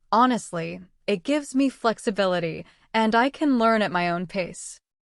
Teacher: That tiny pause after honestly adds rhythm and makes your speech sound more confident. Native speakers do this naturally, and it's a secret to sounding fluent. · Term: pausing